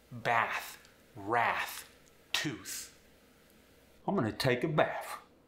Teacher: For the medial and terminal voiceless TH, you're going to replace it with an F.